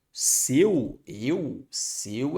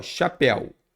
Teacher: Seu, eu, seu é fechado e céu é aberto, chapéu é aberto. El de chapéu é diferente do el de seu e céu.